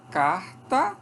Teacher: Aqui é surdo porque depois dele vem um T, que é surdo. Então, esse R aqui, que é uma fricativa glotal, ele ocorre como surda antes de consoante surda. O T é surdo, portanto sai surdo.